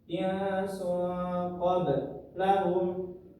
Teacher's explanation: Di qaf ini selanjutnya ada huruf ba, yang mana huruf ba ini termasuk huruf qalqalah dan sukun, maka di qalqalahkan juga, dipantulkan cara bacanya.